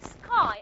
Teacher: You're not going to aspirate the ka in the word sky. Why? Because it's preceded by the sound sa.